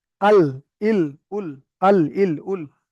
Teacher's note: দেখেন জিভের আগাটা গিয়ে উপরের দাঁতের গোড়াগুলোতে লাগছে, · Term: লাম